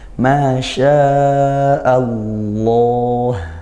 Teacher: Lafaz Allahnya dibaca tafkhim karena didahului fathah. Tafkhim yaitu tebalnya dari pangkal lidah, bukan dari bibir